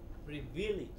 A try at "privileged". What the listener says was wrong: Privileged. Pre. don't make the second syllable longer. It is just the first thing. Privileged.